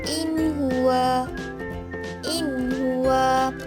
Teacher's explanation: apabila nun mati bertemu dengan huruf H, maka ia dibaca jelas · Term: izhar halki